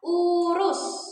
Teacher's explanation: Ada bunyi U tinggi bawah belakang. Contohnya pada kata urus.